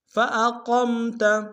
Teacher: فَأَقَمْ میں قاف کو موٹا ادا کریں گے